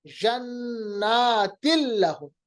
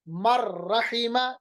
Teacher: اسی طرح جنات لہم، تن نہیں بلکہ دو زیر کو مکمل طور پر ہم نے لام کے ساتھ ملایا، غنہ رہا نہیں، نون کی آواز بالکل ختم ہو گئی، ادغام بلا غنہ۔